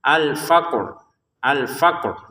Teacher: Qf-nya dipantulin dulu baru rnya kita sebutin.